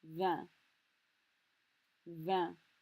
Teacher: It sounds almost like the English word van, like a van that you drive, but it's a nasal sound.